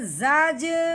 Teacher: جیسے کہ اب یہ جو جیم ہے یہ حروف قلقلہ میں سے ایک حرف ہے، اس لیے اب ہم نے کیا کرنا ہے، جب زا کو جیم ساکن کے ساتھ ملائیں گے تو ہلکا سا اس کو ہلائیں گے بھی